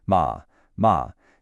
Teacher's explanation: the fourth tone is a sharp quick drop like a command.